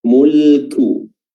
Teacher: huruf kaf di sini yang berharakat dhammah. Di sini dia memiliki sifat hams, mulku ya, jadi dan juga pelafalan dhammahnya, pelafalan u-nya harus disempurnakan dengan baik.